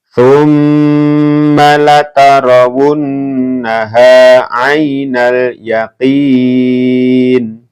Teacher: ini dibaca mendengung ya, karena ada mim tasdid, ini bacaan gunnah